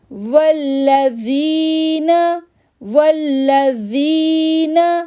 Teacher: اب زی کو 2 سیکنڈ کے لیے کھینچیں گے